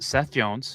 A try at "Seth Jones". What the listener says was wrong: How did you just pronounce his name? You said C.S. Jones or something. You said something weird. something weird, and I'm convinced of it.